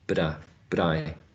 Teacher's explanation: the t may be realized as a flap, but I, using a linking.